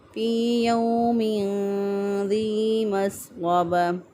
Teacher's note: एक अलिफ के बराबर गुन्ना करते हुए और नून की आवाज़ को नाक में छुपाते हुए हमने अदा किया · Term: इख्फ़ा